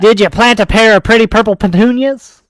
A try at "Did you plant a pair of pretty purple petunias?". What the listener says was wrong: You're saying it slow. It's supposed to be a tongue twister.